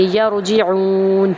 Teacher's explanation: آئین کو ہم ایک الف کے برابر لمبا کرتے ہوئے، کیونکہ پیش کے بعد واو آ گیا اور نون کے ساتھ ہم آیت کا اینڈ کریں گے، یرجعون۔